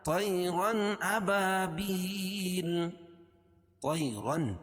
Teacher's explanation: طی یا ساکن سے پہلے زبر ہے تو یا لین، اس کو نرم آواز کے ساتھ جلدی پڑھیں گے، الطا کو موٹا پڑھیں گے کیونکہ حروف مستعلیہ میں سے ہے۔